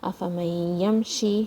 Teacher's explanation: shin comes from the middle of your tongue, and this is a maddiya letter.